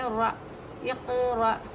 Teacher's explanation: حمزہ ساکینہ ہے را کو ملا کر جھٹکے سے پڑھیں گے